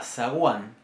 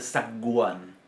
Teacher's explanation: la G en una posición intervocálica entre dos vocales, como por ejemplo en la palabra zaguán, seguramente voy a utilizar una G fricativa.